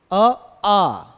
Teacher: जीभ ना तालु को टच कर रही, ना मूर्धा को, ना दंत को, ना ही ओष्ठ को। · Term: कंठ